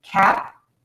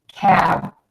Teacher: That voiced sound at the end of this word does influence the vowel, and it makes the vowel sound a little bit longer.